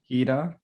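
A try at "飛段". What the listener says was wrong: Oh, you're close. Hidan. It's more on the end. Hidan.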